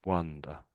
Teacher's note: So it's more of an ah. The O there is really making an ah sound.